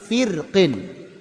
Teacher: Karena sebelum ra itu ada huruf berharakat kasrah. Setelahnya istillanya juga kasrah. Maka dianggap lemah. Dibacalah tipis firqin.